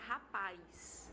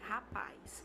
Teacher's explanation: você tem uma vogal numa sílaba e lá você vai inserir uma outra vogal e isso essa inserção ela produz um ditongo